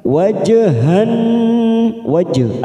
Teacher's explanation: ada huruf jim sukun qalqalah sugro kita pantulkan